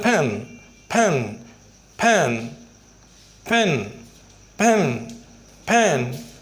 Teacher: बल्कि प के साथ हल्की सी आवाज़, हल्की सी हवा की आमेज़श शामिल होती है। हल्की सी मुंह के अंदर जिसे कहते हैं कि हम हवा · जब ये लेटर किसी वर्ड के शुरू में आता है तो ये प्रॉपरली मोटी सी पा साउंड नहीं निकालता, बल्कि थोड़ी सी उसमें हवा की आमेज़श शामिल होती है